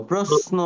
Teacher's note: প্রশ্ন, দেখো, আমরা এটা মানে আমরা প্রশ্ন বলবো না, হ্যাঁ, প্রশ্ন বলবো না। তালব্য শ যখন নয়ের সাথে থাকে তখন এটার উচ্চারণ দন্ত স এর মতো হয়, মানে এস এর মতো